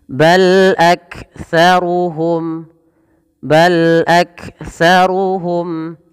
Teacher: mim mati bertemu dengan lam maka dibaca dengan bacaan izhar syafawi jelas Suara mimnya